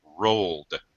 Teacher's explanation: if the last sound of the verb like l r if it's a voiced sound we just add a d no vowel sound